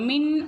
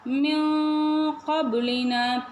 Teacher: நூன் சாக்கினை மூக்கில் மறைச்சி சொல்லணும்